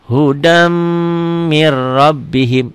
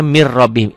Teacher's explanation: Hudam agak sedikit dengung dan ditahan. Ini idgham bigunah.